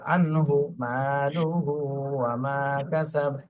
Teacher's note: হুতে একটু টান হয়ে গেছে, এটা কিন্তু হরকত, এক পেশ, দ্রুত বলতে হবে। আনহু মালুহু ওয়া মা কাসাব।